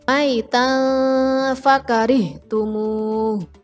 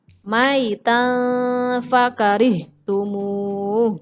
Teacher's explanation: Di situ taknya berharokat fathah tanwin, di depannya ada huruf fa. Huruf fa adalah salah satu huruf ikhfa, maka bacanya harus didengungkan.